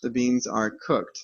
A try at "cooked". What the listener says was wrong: Also remember the pronunciation, Not cook it. Not cook it. Cooked, right? Remember the pronunciation of ed.